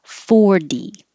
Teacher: if it's the bigger number 40 the stress will always be on the first syllable and the t will always change to d